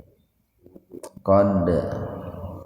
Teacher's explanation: ada huruf dal yang sukun di tengah-tengah kalimat, jadi dipantulkan secara ringan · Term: qalqalah sugro